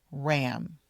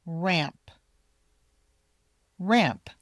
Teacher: You need to make sure you say the ending of the word, the P. Otherwise, it will sound like the animal ram.